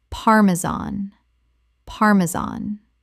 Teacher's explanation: The stress is on the first syllable and the final an sounds like the word tan.